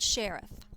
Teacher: by using stressed and unstressed syllables think of the word sheriff which syllable is stressed the first or the second we stress the first syllable · We stress the first syllable of the word sheriff.